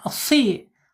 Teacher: Harus ditebalkan dulu ya, karena isti'la ya, sod ini walaupun dia kasroh tetap dibacanya harus tebal. Si gitu ya, nggak boleh si tapi si gitu ya.